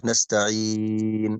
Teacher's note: مقدار مد العارض للسكون يا كرام 2 أو 4 حركات أو 6 حركات. يكون جوازا، يعني إما أن أمده 2 نستعين، أو 4 نستعين، أو 6 يكون مدا طويلا نستعين.